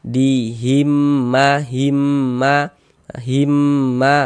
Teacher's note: ini kan mimnya ada dua ada dua kan. Yang satunya sukun, yang satunya hidup nih. Tapi ini bunyinya cuman satu · Cara membacanya dengan cara memasukkan ya kemudian disertai dengan dengung. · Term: idgham mimi